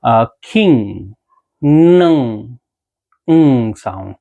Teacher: ये सारे nasal sounds होते हैं, ये नोज से प्रोड्यूस होते हैं